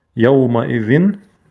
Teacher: Тут танвин не скошенный, поэтому чисто нун выговариваем.